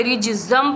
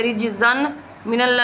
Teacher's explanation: अगर तनवीन के बाद हरूफ यरमलून में से कोई हर्फ आ जाए तो वहाँ इदगाम होगा, यानी तनवीन को नून के अंदर डालकर, यानी नून साकिन को हरूफ यरमलून के अंदर डालकर हम अदा करेंगे। यहाँ पे तनवीन है, यहाँ पे मीम है हरूफ यरमलून में से, इसलिए रिजज़म पढ़ेंगे, रिजज़न मिनल्ला नहीं पढ़ेंगे, रिजज़म पढ़ेंगे।